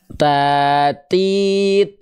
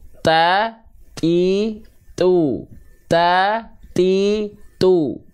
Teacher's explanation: huruf ta itu ujung lidahnya masih berada di dalam area mulut tidak nongol keluar